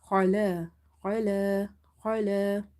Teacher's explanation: Kha is from the upper part of your throat, it's from the halkia letters and it's heavy as well, so you have to say khala khala khala.